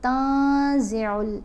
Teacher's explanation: جہاں بھی نون ساکن یا نون تنوین کے بعد حروف احفا میں سے کوئی حرف آتا ہے تو ہم نے نون کی آواز کو ناک میں چھپا کر پڑھنا ہے اور ایک الف کی مقدار جتنا ٹھہر کر بھی پڑھنا ہے